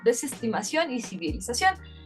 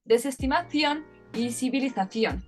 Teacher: en España sí existe una clara diferenciación y es representado a través de este fonema, que es fricativo dental sordo